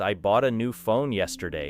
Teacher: the strongest information may fall on bought, new phone, and yesterday, while words such as I and a usually receive less energy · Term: sentence stress